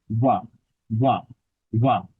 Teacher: আপনি ব কে, অর্থাৎ ব, প ফ ব, এই বটাকে যখন উচ্চারণ করছেন, তখন দুইটা ঠোঁটকে টাচ না করে ব উচ্চারণ করবে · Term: অন্তঃস্থ ব